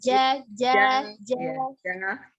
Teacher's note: janya kan tengah lidahnya dengan langit-langit atas, tengah lidah ja.